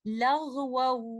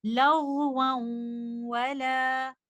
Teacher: इदगाम करते हुए मैंने जहन में रखना है लेटर नून की सिफ्त, गुन्ना को मैंने वाव के साथ मिलाना है, और उसको मैंने कुछ देर होल्ड करना है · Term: इदगाम नाकिस